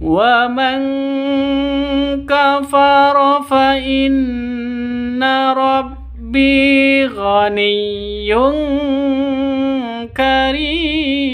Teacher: Wa man kafara nun mati bertemu dengan kaf, samar didengungkan, siap-siap ke huruf kafnya, nun matinya ditambah dengan ng karena ikhfa hakiki.